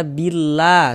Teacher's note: Lafaz Allahnya itu ya huruf lam jalalahnya itu kita baca tipis, kita baca tarkik.